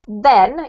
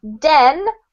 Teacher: the difference between a duck and a the is literally that your tongue has to stick out of your mouth a little bit when you say the th